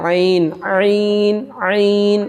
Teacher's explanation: بیچ والا حصہ ہے گلے کا جس کو درمیان حلق کہتے ہیں، اس سے عین عین عین ادا ہوتا ہے